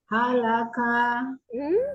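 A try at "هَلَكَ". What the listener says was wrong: Coba lihat mana yang panjangnya, hanya panjang atau pendek? Halaka. Ya, diluruskan saja, tidak ada ayun lakanya. Halaka, supaya tidak tertarik.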